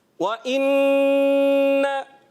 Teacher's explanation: नून मुशद्दद में हमेशा एक अलिफ का गुन्ना होता है